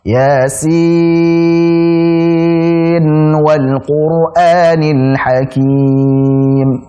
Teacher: dibaca nunnya dengan jelas, ya, dengan izhar. Dan diberikan sifat tawassut, ngalir sedikit, jangan terlalu panjang.